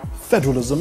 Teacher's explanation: The word is federalism and not federalism. Federalism, you stress the first syllable.